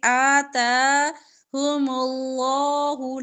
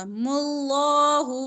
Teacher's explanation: لام لفظ اللہ سے ما قبل پیش ہے تو لام موٹا ہوگا